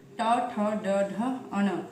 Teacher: मूर्धन्य अर्थात हमारे जो तालू और होंठ के बीच का जो कठोर भाग होता है वो, और क्योंकि इसके उच्चारण के समय जीभ का मूर्धा से लगने पर ही संभव है।